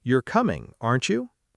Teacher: If you're really unsure and truly asking, the tag rises. "You're coming, aren't you?" But if you're almost certain and you just want the other person to confirm, the tag falls.